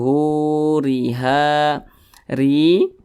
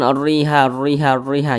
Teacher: huruf ro yang memiliki tanda baca kasrah maka huruf ro dibaca tipis